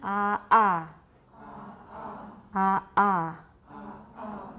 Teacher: that's a glottal stop not a velar stop